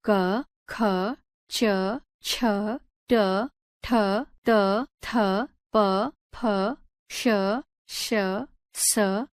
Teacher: जिस वर्ण के उच्चारण में स्वर यंत्रिका में कंपन नहीं होता है उसे अघोष वर्ण कहते हैं।